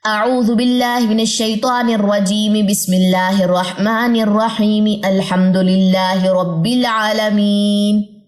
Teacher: میں نے یہ زیریں ساری پڑھی ہیں ساتھ ساتھ، کیونکہ میں نے وصل کرنا تھا تو زیریں ڈراپ نہیں ہوں گی